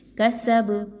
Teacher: کسب، اب یہاں پہ دیکھیں تو کاف اور سین اور با تینوں پہ ایک ہی حرکت موجود ہے زبر کی، کسبا، ٹھیک ہے۔ تو با پر جب آپ جزم لگاتے ہوئے وقف کریں گے تو با کو قلقلہ کرتے ہوئے پڑھیں گے، کسب ہلا کے پڑھیں گے۔